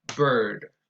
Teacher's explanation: The sound is a mid-central and tense rounded vowel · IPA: /ɝ/